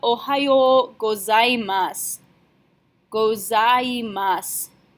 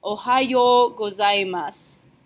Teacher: whenever it's the last hiragana in a word, you don't pronounce the U sound. You're just going to end with your S.